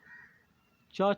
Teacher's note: च, छ जो होते हैं ध्वनि यह तालु से होता है